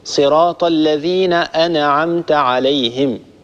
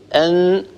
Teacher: النون ليست من حروف القلقلة، حروف القلقلة هي فقط قطب جد، القاف والطاء والباء والجيم والدال، هذه الحروف إذا سكنت هي التي نخرجها بالتباعد بين طرفي عضو النطق، أما النون إذا سكنت فإننا نخرجها بالتصادم بين طرفي عضو النطق